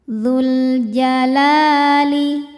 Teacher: Alif lam-nya dinamakan alif lam qamariyah. Sebab alif lam menghadapi huruf qamariyah yaitu jim. Cara bacaannya jelas.